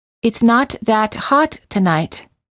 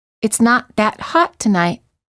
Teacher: the first time the t's are released and the second time the t's are held · The T in the second sentence is almost silent. All you hear is the interruption of the previous sound. This just gives you an idea that the T is there.